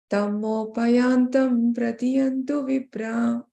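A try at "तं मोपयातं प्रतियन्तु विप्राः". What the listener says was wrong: Tammopayatam, there's no yantam, okay? Tammopayatam pratiyantu vipra.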